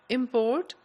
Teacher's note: the word import when you say import it's a verb and when you put the stress on the first syllable import it's a noun